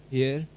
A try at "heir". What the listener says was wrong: This, in this, H is almost silent. Air. Air.